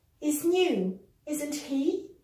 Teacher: with a rising intonation it means I'm unsure